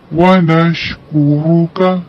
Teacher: وَنَشْكُرُكَ کاف کی ادائیگی باریک کرنی ہے، را کو موٹا پڑھنا ہے